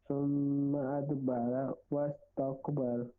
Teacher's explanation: اد دال پر کلکلا کریں گے, را موٹا پڑا جائے گا. واستکبر را موٹا پڑا جائے گا.